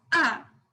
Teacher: the fourth tone which is sharp